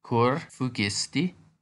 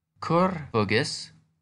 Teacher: in the perfect past tense, the U sound lengthens.